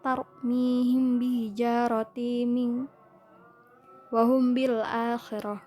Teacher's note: Syafawi artinya sebangsa bibir, di mana maksudnya karena dua huruf tersebut yakni huruf mim sukun yang bertemu dengan huruf ba, keluar huruf makhrajnya dari syafatain kedua bibir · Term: ikhfa syafawi